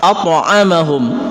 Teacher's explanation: dan kebetulan di sini adalah Qalqalah Sugra Kenapa dikatakan Qalqalah Sugra Qalqalah kecil pantulannya tidak dikeraskan karena ini berada di tengah-tengah kata · Pantulannya tidak dikeraskan karena ini berada di tengah-tengah kata, tidak berada di akhir ayat. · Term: qalqalah sughra